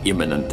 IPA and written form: ˈɪmənənt (Imminent)